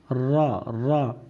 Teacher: र का मखर थोड़ा सा अंदर से है मतलब थोड़ा और अंदर आपको जबान ले जानी पड़ेगी